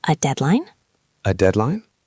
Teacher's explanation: the intonation is key. It has to go up at the end, like a question. You are implying, "Tell me more about this deadline." Let's practice the sound.